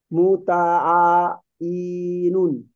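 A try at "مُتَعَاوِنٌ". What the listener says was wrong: মুতাআবিনুন, হ্যাঁ, ওয়াওজের ভি হয়, মুতাআবিনুন।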